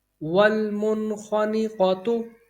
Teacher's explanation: خواہ حرف حلقی میں سے ہے، تو یہاں پر اظہار ہوگا